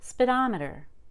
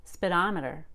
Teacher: Wow, I even reduced speed to spid.